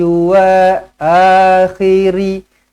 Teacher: Jangan pula kalau sambung, ri ni jadi ro, jadi ru. Akhiro, akhiru.